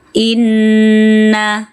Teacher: Disimbolkan dengan tasdid, dengungkan nun bertasdid ya. Gunnah musyaddadah, wajibul gunnah, wajib dengung bila nun bertasdid.